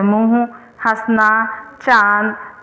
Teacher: अनुनासिक इसका प्रयोग चंद्रबिंद है, इसका उच्चारण नाक व मुंह दोनों से होता है।